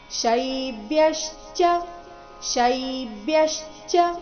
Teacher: ಶೈ ಮೇಲೆ ಆಘಾತ ಬರಬೇಕು ಮುಂದೆ ಅರ್ಧ ಬ ಮತ್ತೆ ಪೂರ್ತಿ ಯ ಈ ಸಂಯುಕ್ತಾಕ್ಷರ ಬಂದಿದೆ ಶೈಬ್ಯಶ್ಚ ಅಲ್ಲಿ